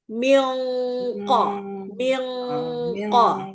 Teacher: kalau yang qof itu tengah lidahnya cekung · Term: eng tebal